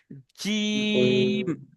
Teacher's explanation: জিভের মাঝখান আর উপরে মাড়ির সাথে লেগে একসাথে উচ্চারণ হবে কি জিম।